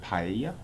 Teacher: when you have those two L's, you've got that Y sort of sound in English, so it's that paella, is how you'd say it.